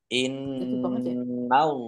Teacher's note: nun takdir dibaca gunah atau mendengung, biar tampak mendengung maka harus ditahan. Ditahan kurang lebih dua harokat.